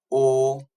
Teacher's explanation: huruf O berada di belakang lidah dan juga darjah keterbukaan mulut untuk huruf O iaitu separuh sempit. Dan bentuk bibir apabila kita lakukan huruf O, dia akan berbentuk huruf bentuk bundar iaitu O.